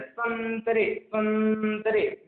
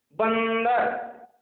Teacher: जब अनुस्वार वाले शब्द को हम बोलते हैं तो उस समय जो हवा जो है केवल नाक से निकलती है